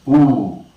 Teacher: we know that ooh is a rounded back close long sound